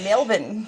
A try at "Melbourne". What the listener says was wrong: From Melbourne. There's no Orne. Melbourne.